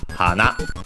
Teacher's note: accented on the last syllable, on the na